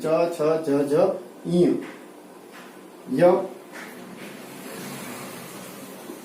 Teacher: ई च य और श की ध्वनि है वो तालु से उच्चारित होती है और तालु से उच्चारित होने के कारण इसको तालवी ध्वनि कहा जाता है।